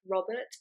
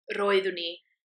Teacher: so you make your tongue sort of trill behind your teeth. So, examples in Welsh, you'd have a name like Robert, but it would be pronounced R, Robert, or Robert, if you were going to roll the R's properly.